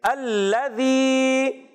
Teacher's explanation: الذی، لام کو مشدد رکھیں گے، تھوڑا رک کر ادا کریں گے۔ زال کی ادائیگی کلیئر رکھنی ہے، زا سے نہیں بدلنا، ایک الف کھینچنا ہے کیونکہ یا مدہ ہے۔